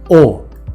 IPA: o